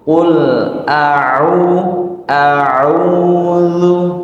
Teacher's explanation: ketika kita mengucapkan ain setelah hamzah ini, a-nya jangan sampai terpengaruh ya dengan huruf ain